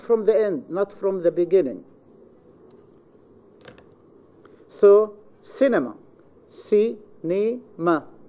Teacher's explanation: the stress must be in the third syllable from the end